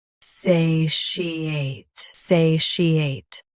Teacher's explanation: Stress say first. Keep she smooth. Then ate clean.